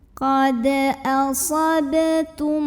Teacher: Maka cara bacanya adalah dipantulkan sama dengan dal dengan pantulan yang kecil dan tetap dialirkan ya. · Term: qalqalah sugro